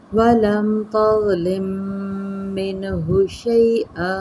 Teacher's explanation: ضا مستعلیہ ہے لیکن نرمی کے ساتھ پڑھا جاتا ہے